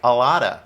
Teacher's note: We kind of combine them all together and we say like a lotta. Be careful, the T sounds more like a D